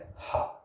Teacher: जो वायु होती है, जो हवा होती है, स्वर तंत्रियों से सीधे बाहर निकल जाती है, यानी वायु क्या होती है आपका स्वर तंत्र मुख से सीधे बाहर निकल जाती है, ठीक है। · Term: काकल्य